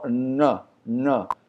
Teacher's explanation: Esse aqui é o Hana, que é o Nã cerebral. A língua toca no céu da boca quando você fala.